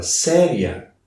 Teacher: primeiro a semivogal e depois a vogal. Ou seja, eu tenho um ditongo que começa brando e sobe. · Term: ditongo crescente